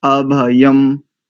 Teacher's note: अनुस्वार को पूरा मकार थोड़ी करेंगे, अर्ध मकार करेंगे, अर्ध म अभयम।